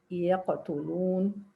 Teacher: And they say we have صغرى or lesser or weak one when the second letter of qalqala is not at the end, it's just in the middle of a word. The qalqala is rather less evident